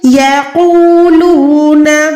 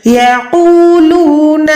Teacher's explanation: قوف موٹا رکھیں، ٹھیک ہے، واو کے ساتھ ملا کے ایک سیکنڈ لمبا کریں